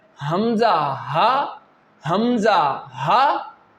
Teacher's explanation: This pair is pronounced from the deepest part of your throat which is towards your chest. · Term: throat letters